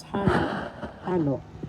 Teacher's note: first syllable has the accent